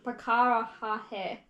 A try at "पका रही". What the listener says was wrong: पका ra you are missing. That's it. मैं पका रही हूँ. So ra you are missing.